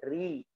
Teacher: Ri, ujung lidahnya turun ke bawah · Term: Ra tipis